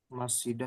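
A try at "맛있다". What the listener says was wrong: Masita. Masita. Oh, masita. Jadi masita, masita itu enak. Nah, kalau minum itu masida. S-nya di ini ya di atas ya.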